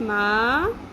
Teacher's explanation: میم زبر الف ما، حرف مدہ الف جس سے پہلے زبر آ گئی، ایک الف کے برابر لمبا کریں گے